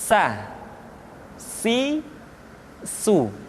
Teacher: diucapkan sebagaimana kita mengucapkan huruf sa, yaitu ujung lidah di antara dua gigi seri kita.